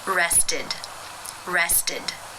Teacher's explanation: the infinitive form of the verb is that T sound therefore it is case 3 where the e d is pronounced as the e as in sit with the D sound